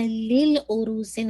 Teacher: دیکھیے ورڈ تھا لی عروسن، پھر آپ کیا ہوا لی، اور اب ال کے ساتھ کریں گے تو کیا ہو جائے گا العروسن، تو حمزۃ الوصل گر جائے گا، اور لام کا لام کے ساتھ ادغام ہو جائے گا